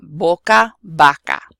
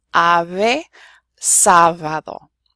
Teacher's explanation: where it's at the beginning of the word, it sounds like a B, and the last two, where it's in the middle of the word, it sounds kind of like our V. It's not our V though, it's what's called an approximant.